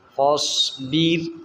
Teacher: صاد سیٹی والا بھی ہے اور موٹا بھی ہے